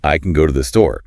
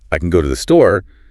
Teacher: The function words almost disappear. If you stress them, it sounds very deliberate, almost like you're angry or being sarcastic.